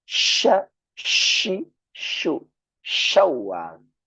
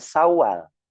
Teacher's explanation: tengah-tengah lidah nempelkan ke langit-langit atas. Maka keluar angin yang besar seperti kita mengusir ayam. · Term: shin